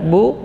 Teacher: Ba huruf syiddah dan jahar, bu keluar dari 2 bibir, maksudnya bagian luarnya, karena menekan bibir